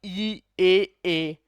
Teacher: जीभ का अगला हिस्सा वर्क कर रहा है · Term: अग्रस्वर